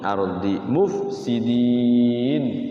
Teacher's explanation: Ardi hukum ra dibaca tafkhim. Jangan tarhim, tafkhim.